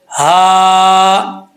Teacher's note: اس ہا کا تعلق سینے کی طرف ہے، بھاری آواز کے ساتھ پڑھیں گے